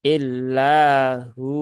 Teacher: muncul hukum yang baru yaitu wau sukun setela damah sehingga dia menjadi Mad Thobi'i yang mana panjangnya adalah dua harakat